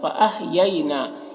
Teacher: یا لین اسے نرم آواز کے ساتھ جلد پڑھیں گے. نون میں کھڑا زبر ہے، اسے ایک الف کے برابر کھینچیں گے.